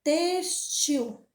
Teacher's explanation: Ela tá acentuada na penúltima sílaba. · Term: Paroxítona